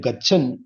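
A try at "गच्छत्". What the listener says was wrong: Gachat, not Gachan.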